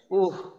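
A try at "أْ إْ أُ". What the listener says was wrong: এই জজমের উচ্চারণটা কিন্তু একটু পার্থক্য কম বোঝা যাচ্ছে।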